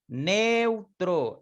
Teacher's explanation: la E se abre más que la U